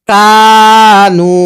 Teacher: কাফ আলিফ জবর কা, নুন ওয়াও পেশ নু, কানু। কাফের মধ্যেও এক আলিফ টান, নুনের মধ্যেও এক আলিফ টান